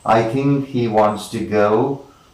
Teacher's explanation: we have three stressed syllables three unstressed syllables